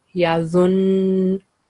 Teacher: So we will manifest Shadda sound, and it's Noon with Shadda, so we will produce 2-second nasal sound.